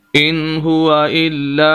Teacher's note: زبر ہے لام کے اوپر اور اس کے آگے الف ہے اور ہم نے اس کو لمبا کر دیا ہے